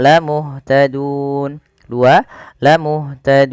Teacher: Kemudian pada lafal dun ada bacaan mad arid lisukun, yang dimana kita boleh memilih untuk memanjangkan lafal dun dengan mematikan nunnya